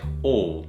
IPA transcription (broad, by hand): ɔ: